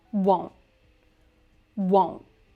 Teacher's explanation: we usually stop the T at the end of this word, won't. Won't.